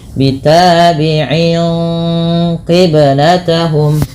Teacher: bunyi nun yang sukun dan tanwinnya disamarkan kepada huruf setelahnya · ainnya disamarkan kepada huruf qaf sehingga dia menebal karena huruf qaf termasuk huruf isti'la ya, yang dia pangkalnya terangkat agak ditebalkan. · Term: ikhfa hakiki